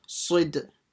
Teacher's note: The sad will join to the dal, soid. So pronounce the sad with a s, and then the dal with a bouncing sound.